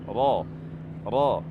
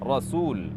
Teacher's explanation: mengucapkan kata Rasul huruf ro berharakat fathah maka dibaca tafkhim Yakni dengan mengangkat pangkal lidah dan tengah lidah kita membentuk permukaan cekung